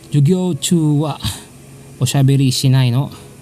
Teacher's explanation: Just like what I've told you in lesson 0030, particle no can be a sentence ender, and if you want to make it an interrogative sentence, just raise the intonation of the no.